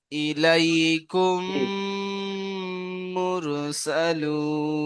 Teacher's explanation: মিম সাকিনের পরে মিম এসেছে তাই এক আলিফ পরিমাণ গুন্না